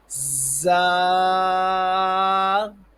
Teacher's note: سیٹی کی تھوڑی سی آواز بھی نکلیں اور سختی سے ادا ہو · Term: سیٹی والے حروف